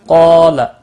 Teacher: قاف حروف مستعلیہ پر پڑھا جائے گا، اس کے ساتھ الف بھی ہے، یہ بھی پر پڑھا جائے گا، لا کو کھینچنا نہیں۔